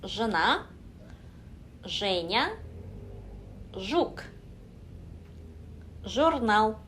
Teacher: Женя, жена, жук. 혀를 입천장에서부터 대고 시작하시면 안 되고 혀는 늘 입천장에서 떨어져 있다 라고 생각을 하시고 발음을 해보세요.